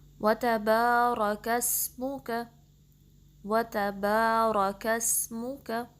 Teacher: با کو 2 count stretch کرنا ہے، اور را کو پر پڑھنا ہے، ہیوی پڑھنا ہے، کاف کو باریک رکھنا ہے اور سین سے ملانا ہے، سین کی سیٹی واضح کریں گے۔